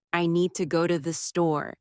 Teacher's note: The stresses on need and store. While two and the are softer and faster, this rhythm is one of the biggest differences between learners and native speakers.